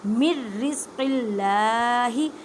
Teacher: اللہ کے لفظ کو باریک پڑھیں کیونکہ اللہ کے لفظ سے پہلے زیر آ جائے